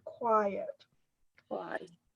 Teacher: The emphasis is on the first part of the word, quiet.